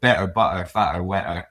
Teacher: We don't say the letter T, and I found that's called a glottal stop.